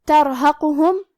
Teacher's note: کلمت ترحقہم، یہاں را ساکن ہے، یہاں را کا حکم ہے تفخیم کیونکہ اس پہ جزم ہے، لیکن اس کے پہلے والے حرف پہ تا پہ زبر ہے تو ہمیں را کو موٹی آواز میں پڑھنا ہے · حرف القاف کی ادائیگی زبان کے جڑ اور تالو کے نرم حصے سے ہے، قاف حروف تفخیم میں سے بھی ہے تو ہم یہ حرف کو موٹی آواز میں پڑھیں گے